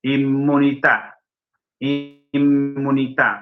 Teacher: El italiano, sí, pronuncia dos M's.